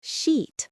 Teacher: you need the long tense vowel sheet. Pull that smile wide. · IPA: iː